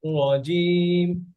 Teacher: রটা আর একটু মোটা করেন